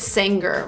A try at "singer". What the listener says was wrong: We don't say singer. The G is not pronounced with a hard G sound. Singer is not correct. We say singer. Make a nasal sound with the NG. Singer. And then link to the sound. Singer. Singer.